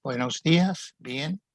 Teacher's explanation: of midway between how we pronounce b and b in english it's more like a soft v with the lips only slightly touching